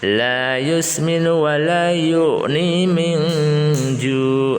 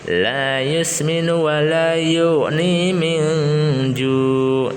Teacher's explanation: Min ju ikhfa hakiki, samar-samar mendengung 3 harokat atau lebih.